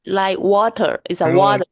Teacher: this T sound we make in English that isn't really a T sound. It's more of like this glugging sound with water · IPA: ʔ